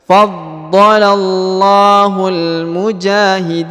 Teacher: Huruf na-nya disukunkan ya, karena berada di ujung bacaan